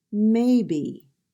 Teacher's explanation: Maybe, two syllables, may be, and the first syllable is stressed.